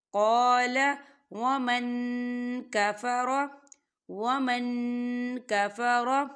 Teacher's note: والیوم الآخر قال ومن کفر، ومن، یہاں دیکھیں نون ساکن ہے، نون ساکن کے بعد کاف آ رہا ہے، کاف جو ہے اقفا کا ورڈ ہے، تو یہاں پر اقفا ہوگا، ہم نون ساکن کی آواز کو ناک میں چھپائیں گے